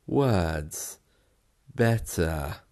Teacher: And in both these cases, the R is gone completely.